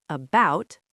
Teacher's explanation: in the word about, the very first letter is a schwa